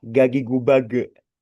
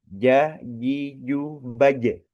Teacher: makhrajnya itu adalah lidah tengah tengah diucapkannya dengan menggunakan lidah tengah